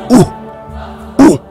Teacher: there is no W sound in the Ibrit. It's the ooh.